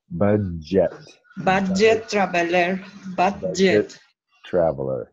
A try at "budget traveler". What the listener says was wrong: Yes. Budget traveler.